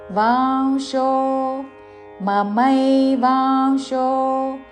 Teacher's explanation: అనుస్వారము నాసిక వ ఉచ్చారణ